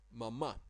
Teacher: the last A is stressed a bit, but the first one is also a short vowel, a short A